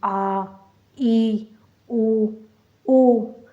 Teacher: दीर्घ स्वर बोलने में हमें ज़्यादा समय लग रहा है